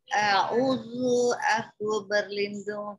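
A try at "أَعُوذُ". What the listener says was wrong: Panjang Ibu, baca panjang.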